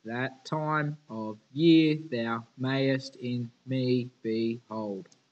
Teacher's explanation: for each iambic feet we have non-stressed then stressed syllables